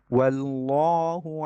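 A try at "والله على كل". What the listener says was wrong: লাম পাতলা হয়েছে এখন, ওয়াল্লাহু, ওয়াল্লাহ, আমারটা খেয়াল করে আবার শুনেন, ওয়াল্লাহ, ওয়া, ওয়াল্লাহ, না প্রথম লামটা পাতলা হয়ে যায় আবার, লাম এখানে মোটা। والله وفخم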